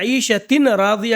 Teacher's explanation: ہم نے تنوین میں نون کی آواز کو را میں داخل کر دیا